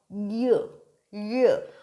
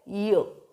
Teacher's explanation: Middle of the tongue is touching the roof of your mouth, य। और जो आपकी टिप ऑफ द टंग है वो हल्का सा आपके टीथ की जो बैक साइड है उसको टच करती है।